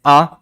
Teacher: उच्चारण करने में मुख सर्वाधिक खुलता है